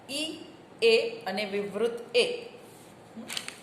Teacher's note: જીભના અગ્રભાગ થી ત્રણ સ્વર ઉચ્ચારાય છે ઈ એ અને વિવૃત એ